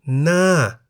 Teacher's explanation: Na, meaning face, is in the falling tone because the word Na has one syllable that begins with a high-class consonant Ho Heb and has the tone mark Mai To.